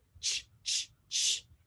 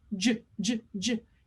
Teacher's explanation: So making the connection to a sound they know, ch, ch, ch, and saying, okay, all you do now is turn on your voice box because this sound is j, j, j. Your mouth is the same, but we're just turning on our voice box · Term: the voiced j